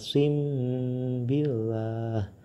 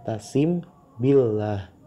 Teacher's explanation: mim sukun bertemu dengan ba maka membaca mim sukun nya tersebut harus disamarkan serta didengungkan